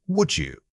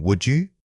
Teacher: Notice how the D in would often reduces or links with the following vowel. Instead of saying would, your breath should guide it smoothly from one syllable to the next.